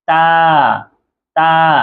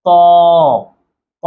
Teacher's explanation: তা একদম নরমাল পাতলা আওয়াজ হবে, আর ত একটু মোটা আওয়াজ হবে, মুখ ভর্তি আওয়াজ হবে।